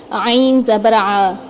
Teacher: عین کی جو ہے حلق کے درمیانی حصے سے ادا ہوتا ہے، اس لیے حلق کے درمیانی حصے سے عین کی آواز نکلتی ہے، تھوڑی سی اسکویز ہو کر، عین زبر آ، ٹھیک ہے؟